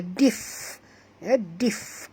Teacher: izhar syafawi, fi ma asli, ha ma asli, 2 harakat belaka, dif, bunyikan fa dengan hamasnya, dif, dif, ketat gigi atas ke bibir bawah